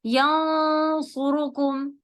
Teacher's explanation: صاد ہے جب heavy letter آگے آئے گا تو آپ کا اخفا بھی ہیوی ہو جائے گا